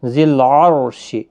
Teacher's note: را ساکن سے پہلے زبر ہے، اس لیے را ساکن پور پڑھا جائے گا